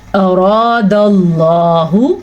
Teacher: را کو ہم نے پر پڑھا، را کے بعد الف مدہ بھی پڑھا. تو اور اللہ کے نام کو بھی پر پڑھا کیونکہ اللہ کے نام سے پیچھے والے حرف پہ زبر ہے.